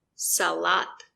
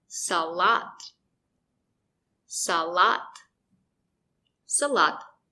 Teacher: The first syllable is not stressed, so the letter A makes a closed sound. A. It's very short.